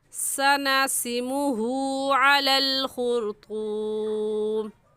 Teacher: صحیح لفظ ہے سناسمہ. ہا کے اوپر الٹا پیش ہے اس لیے الٹا پیش اس ہا کو کھینچیں گے اور ایک الف کے برابر کھینچیں گے